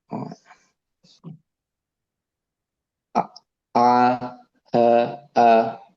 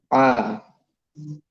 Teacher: Huruf Ain keluar dari tenggorokan bagian tengah.